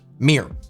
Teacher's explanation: in my American accent, we smush everything down into one syllable